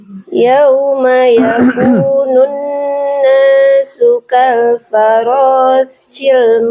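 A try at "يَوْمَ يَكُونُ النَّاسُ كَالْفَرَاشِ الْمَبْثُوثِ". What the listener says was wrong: Shin, pakai shin. Shi. Kal farashi. Yawma yakunun nasu kal farashi.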